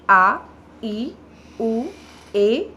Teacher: ह्रस्व स्वरों से दुगना समय लगता है यह दीर्घ स्वर कहलाते हैं